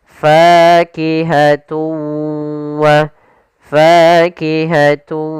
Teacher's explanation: Maka cara membacanya maka kita namakan di sini hukum idgam ghunah. Cara membacanya yaitu suara tanwinnya kita masukkan langsung ke huruf wau dan kemudian kita tahan gunahnya. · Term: idgham bi gunnah